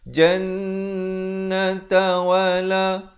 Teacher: Ramai orang buat silap dia baca yadkhulunal jannata wala salah. Yang betulnya jannata wala dengungkan di situ wajibul gunnah, wajib dengung 2 harakat.